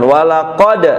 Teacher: Qalqalah itu dipantulkan. Walaqad, dalnya dipantulkan.